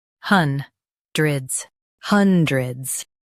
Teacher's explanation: Stress hun and keep dred light. It's quick.